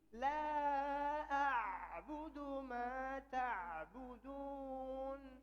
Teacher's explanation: La panjang, kemudian hamzah ketemu ain, dibentuk ainnya dengan sempurna. A sendiri, ain sendiri. Jangan kecekek dari awal.